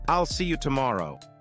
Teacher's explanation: Notice how there's a tiny pause after I'll see you.